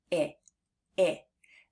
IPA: ĭ